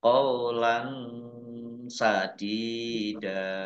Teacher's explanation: Fathah tanwin bertemu dengan huruf sin bacaan ikhfa dibaca samar-samar.